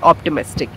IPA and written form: ˌɑːptɪˈmɪstɪk (Optimistic)